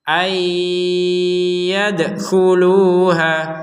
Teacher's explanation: Nun sukunnya enggak tertulis, maka jangan dibaca dengan jelas.